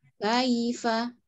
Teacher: Jadi ka diseret langsung bunyi i. Ya, sukun bunyi i. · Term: huruf lin